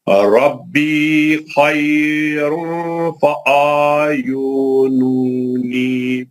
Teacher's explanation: اخفا ہے، تنوین کے بعد فا ہے